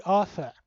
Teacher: you can hear even though there's two r's there it's not pronounced